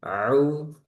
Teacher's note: Kalau ain dia tengah tenggorokan